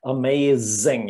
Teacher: it's this voiced s z you can feel the vibration